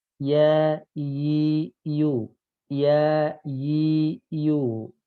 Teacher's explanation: pangkal lidahnya tidak ngangkat, maka suara jadi tipis, ringan di rongga mulut. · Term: istifal